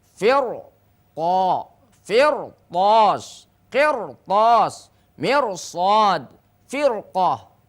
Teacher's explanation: ro sukun sekalipun didahului oleh kasroh karena diikuti oleh huruf isti'la maka ro sukun menjadi tebal. Jadi kalau ro sukun berbaris kasroh sebelumnya namun diikuti oleh huruf isti'la maka ro sukun menjadi tebal.